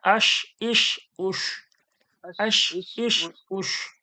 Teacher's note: এটা বড় শিন দিয়ে হবে, জিভের মাঝখান থেকে একটু সিটি বার করে।